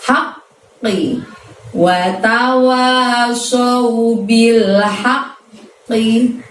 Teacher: Haqqi ada tasydid di huruf qaf, maka harus terdengar 2 qaf ya teman-teman ya.